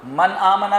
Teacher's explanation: غنہ ہونا تھا کیونکہ نون ساکن ہے لیکن کر نہیں سکتے اس لیے کہ آگے والا جو حرف ہے وہ حمزہ ہے۔ یہاں غور کریں گے تو انشاءاللہ تلاوت میں آسانی ہو جائے گی کہ ہاں اس وجہ سے یہاں پر غنہ نہیں ہو رہا۔